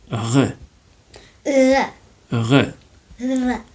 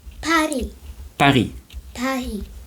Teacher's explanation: it comes from the throat a bit like you're gargling. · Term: letter R